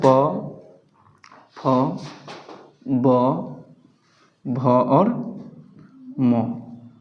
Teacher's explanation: पवर्ग का मतलब होता है प, फ, ब, भ और म का उच्चारण स्थान क्या होता है? ओष्ठ होता है। ओष्ठ अर्थात लिप्स। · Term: ओष्ठीय वर्ण